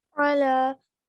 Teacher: Have the ayn sound as well, and connect with the lam.